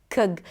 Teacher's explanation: That sound in the middle between the k and the g is the schwa. It's a very, very small, tiny, sweet little sound that exists in almost every other word in English.